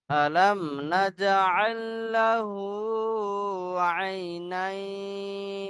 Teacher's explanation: জিমের উপরে সাকিন, জিমটা হলো হরফে কলকলা, কলকলা করে আগের অক্ষরের সাথে মিলিয়ে পড়তে হবে।